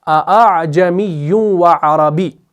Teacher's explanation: پہلا حمزہ ہم تحقیق کے ساتھ ادا کرتے ہیں اور بعد والا ہم نرم کر کے پڑھتے ہیں، اور اسی نرم کر کے پڑھنے کو ہم تسہیل کہتے ہیں، اور یہ جو تسہیل وہاں پر ہو رہی ہے یہ تسہیل واجب ہے۔